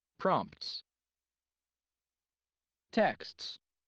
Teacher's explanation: at the end we're having four consonant clusters · so four consonant sounds and no vowel in the middle